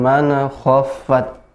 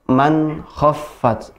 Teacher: Man khaffat, langsung, tidak mana. Nun sukun bertemu dengan kha, izhar, jadi jelas.